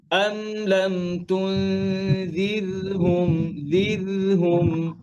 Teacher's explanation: রয়ের মধ্যে আওয়াজ বন্ধ হবে না, আওয়াজ চলবে।